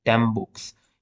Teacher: N becomes M because of the following sound B, which is a bilabial. So M is also bilabial.